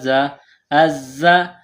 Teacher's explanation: زا میں سیٹی کی آواز پیدا کریں گے